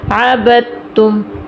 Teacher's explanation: عبد تم کہیں بھی آ جائے یہی صورت کہ ساکن کے بعد فوراً شد آ جائے تو ساکن والے کو چھوڑ دیتے ہیں. عبد تم، دال کو چھوڑ کے با کو ہم ڈائریکٹ تا کے ساتھ ملائیں گے